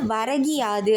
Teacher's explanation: அதுவும் முழுமையா ஒளிக்காம என்ன ஆகுது ஒரு மாத்திரை அளவில் ஒளிக்காமல் அரை மாத்திரையா குறைந்து ஒளிக்குது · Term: குற்றியலிகரம்